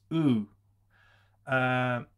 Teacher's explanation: uh if you have an english u you round your lips in japanese it's pronounced without the rounding of the lips